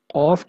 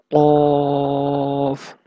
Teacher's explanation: Of comes out when the raised back portion of the tongue touches the soft part of palate.